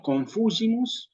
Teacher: el acento va en la antepenúltima sílaba